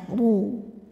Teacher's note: depan KH huruf ro dibunyikan secara tafkhim karena ro berharakat dah cara bacanya ditebalkan dengan cara menaikkan pangkal lidah